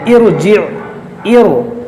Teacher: रा साकिन से पहले आर्जी ज़ेर है तो इस रा को मोटा पढ़ेंगे